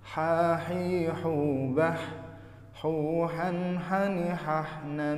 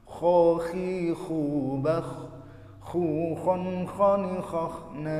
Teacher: kalau ha itu tipis dan bersih, kalau kho itu tebal dan ada ngorok-ngoroknya sedikit